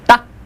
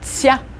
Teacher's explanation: For ta, the tongue on top of your upper teeth. Ta. For tsya, the tongue is kind of closer to the roof of your mouth, very intense.